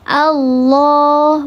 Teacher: Ya, maka dibacanya tebal, di pangkal lidahnya diangkat. Allah, bukan Allah, bukan Allah, tidak ada wawunya di situ. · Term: lafzul jalalah tafkhim